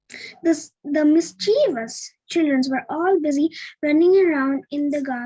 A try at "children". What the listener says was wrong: It's not children's. Last time also when I made you read, you were saying children's. There is no S after N. It's children.